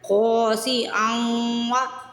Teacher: اور اس ورڈ میں رول ہے، خا کے آگے الف آ رہا ہے، یعنی زبر کے بعد جب الف آتا ہے تو الف مدہ ہوتا ہے، اس کو ہم کھینچ کے ادا کرتے ہیں، خا کو سٹریچ کرنا ہے، کھینچ کے ادا کرنا ہے۔